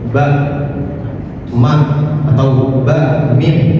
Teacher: Enggak mungkin kita mengucapkan ba dan mim tanpa melibatkan dua bibir.